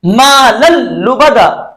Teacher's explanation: तनवीन के नून को हमने नहीं पढ़ा, बल्कि लाम को लाम के साथ मिलाकर लाम को तशदीद के साथ बगैर गुन्ने के पढ़ा। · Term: इदगाम बिला गुन्ना